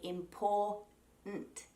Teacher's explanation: the more common way an Australian will say the word important is to drop that T or D altogether and say important. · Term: throat stop